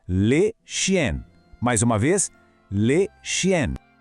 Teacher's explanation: O segredo aqui é o som nasal no final. Aquele som que parece que sai um pouquinho pelo nariz, sabe?